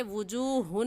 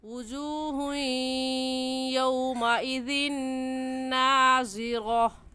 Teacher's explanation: وجوہ پر ہم غنہ کریں گے اور غنہ کرنے کے ساتھ ساتھ ادغام بھی کریں گے کیونکہ تنوین کے بعد حروف یرملون جو کہ 6 ہیں یا غا میم لام واو نون.